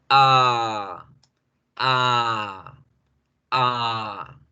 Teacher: La última letra, el último sonido de la A es mucho más fácil. Es sencillamente alargar el sonido de la A como decir dos o tres veces la misma A al tiempo. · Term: la A, alargada